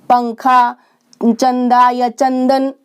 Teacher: अनुस्वार को हम बोलते हैं अंग, अंग का स्वर आता है।